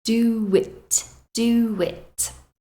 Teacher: There is no W in the spelling here, but you can hear a w sound between do and it. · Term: intrusion